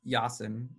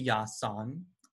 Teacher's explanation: But it's actually 'yasan' and the reason is because in Serbo-Croatian there's a process called epenthesis which inserts an 'a' in between word final consonants